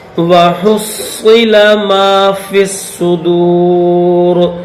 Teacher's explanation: صاد کو موٹا کریں گے، ہا حلق سے نکالیں گے